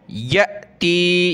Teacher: یہ حمزہ ساکنہ ہے, جھٹکے کے ساتھ پڑھیں گے